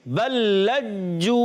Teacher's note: लाम पर भी तशदीद है, जीम पर भी तशदीद है, दोनों को ज़रा रुककर अदा करना है, दोनों में थोड़ा सा जमाव पैदा करके पढ़ेंगे बल्लज्जू।